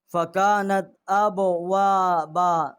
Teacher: اور واو جو ہے اس کو ہم نے 1 الف جتنا آواز بلند کی ہے